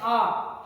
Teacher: ना तो मुख ज़्यादा खोलना पड़ता है ना तो कम, यानी आधे के अंदर बताएगा। लेकिन जब बड़ा आ कहते हैं आ, तो ज़्यादा मुख खोलना पड़ता है, यानी लगभग पूरा मुख, यानी क्योंकि दांत और जोड़ बहुत दूर चले जाते हैं, यानी पूरा मुख खोल जाता है।